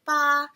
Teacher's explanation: it's just one straight line you're not changing your pitch at all you're not trying to also say a lot of people say · first tone is like high pitch it's just straight it goes like BA and the in the image you'll see